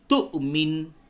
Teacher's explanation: واو کے اوپر حمزہ ہے، اس وجہ سے اس جگہ پہ جب آپ اسے بولیں گے تو جھٹکے کے ساتھ بولیں گے